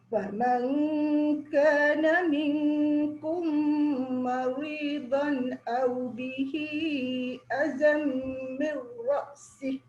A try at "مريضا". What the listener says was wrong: Nipiskan sikit ra tu maridon.